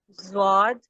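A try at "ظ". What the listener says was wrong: آپ نے ہجے نہیں پڑھنا ہے، آپ نے پورا لیٹر پڑھنا ہے. جیسے زوا ہے، زواد نہیں، یہ زوا.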